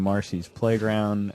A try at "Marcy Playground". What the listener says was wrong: It's Marcy Playground. Not Marcy's Playground.